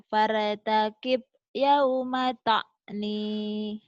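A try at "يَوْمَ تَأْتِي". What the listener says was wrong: Yauma ta'ti. Ta'ni. Kan titiknya dua. Fartakib yauma ta'ti. Fartaqim yauma ta'ti.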